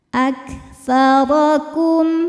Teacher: Wa anna Huruf ro dihukumi dengan ro yang dibaca secara tafkhim. Sebab ro berharokat fathah, maka dibacanya tebal. Aktsarakum, kum ada hukum idhar syafawi.